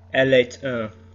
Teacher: we actually pronounce the T because it's followed by a vowel.